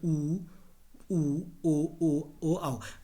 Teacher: वृत्त की आकृति जब हमारे होंठों में बनती है, तो उनको हम ऊ बोलते हैं, बड़ा ऊ बोलते हैं, ओ बोलते हैं, आओ बोलते हैं। वैसे इनका उच्चारण स्थान जो ऊ ओ आओ है, इनका उच्चारण स्थान क्या है, ओष्ठ ही है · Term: वृत्तमुखी